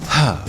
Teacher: for example prahlad it has a direct impact on the lungs it is a purely aspirate sound produced from the throat